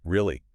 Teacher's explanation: Short, dropping hard into the floor.